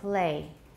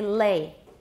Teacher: when you say the whole word play the l is typically voiceless and very different from the l in lay lay is clearly voiced play it's devoiced say the l at